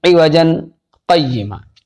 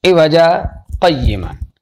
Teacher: بعض لوگ غلطی یہ کرتے ہیں کہ سکتہ کرتے ہیں لیکن تنوین پڑھتے ہیں